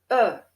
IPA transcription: ə